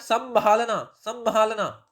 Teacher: लेकिन जब बोला हमने संभालना संभालना, तो संभालना बोलते ही क्या आया, नाक पे इंपैक्ट आया। · उच्चारण में श्वास का जो निकास है वो मुंह और नाक दोनों से होगा